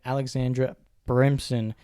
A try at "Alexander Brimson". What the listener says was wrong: Did you say Alexandra then? You said Alexandra.